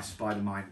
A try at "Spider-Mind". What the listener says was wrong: I know, it's just your accent. Yeah. Sometimes it sounds like man.